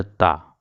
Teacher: تا کا مخرج ہے زبان کی نوک جب سامنے والے اوپر کے 2 دانتوں کی جڑوں سے لگے تو تا ادا ہوتی ہے۔ اوپر کے دانتوں کے جو سب سے بیچ والا دو دانت ہے، اس کو ثنایا علیہ بولتے ہیں۔